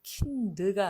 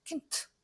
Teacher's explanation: 유성자음인 드가 단어 맨 끝에 나오니까 이거 발음하기 곤란하단 말이죠. 그래서 킨트 이렇게 무성음이 됩니다.